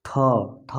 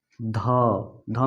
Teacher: थ बोलने पर हवा ज़्यादा निकल रहा है, ध में भी हवा ज़्यादा निकल रहा है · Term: महाप्राण